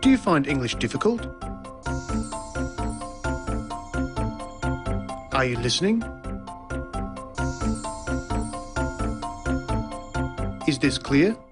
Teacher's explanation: there's the high or rising tone used for asking a yes-no question.